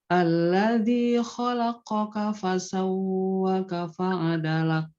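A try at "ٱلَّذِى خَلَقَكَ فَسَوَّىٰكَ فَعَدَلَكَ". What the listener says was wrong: Enggak, bukan ditahan. Ditekan terus dipanjangin 2 harokat. Fasawwaka.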